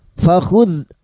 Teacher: dalal sukun bukan qalqalah. Jangan dipantulkan ya. Fakhuzha fathah diikuti alif ha dua harakat kita panjangkan. · dzal sukun bukan qalqalah, jangan dipantulkan ya